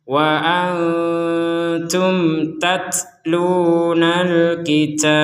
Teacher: Ada nun meskipun bertemu ta maka kita membacanya dengan samar.